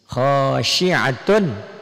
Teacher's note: Ini domah tain ketemu ain adalah hukum idhar halki. Karena ain ini termasuk huruf-huruf tenggorokan.